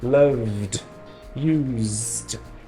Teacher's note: todos esses verbos que vibram aqui na garganta eles têm um som de D